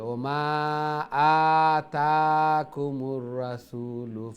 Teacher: খাড়া জবর standing ফতা লং হবে